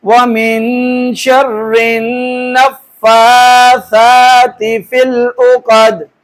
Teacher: نون مشدد میم مشدد بہر حال پہ غنہ ہوگا. فا کے اوپر کھڑی زبر ایک الف برابر لمبا کریں گے